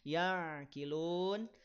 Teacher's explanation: alirkan sedikit ya pastikan ada aliran sedikit tidak dialirkan seluruhnya ya dia ada di tengah-tengah antara terhenti dan mengalir suara nama sifatnya tawassut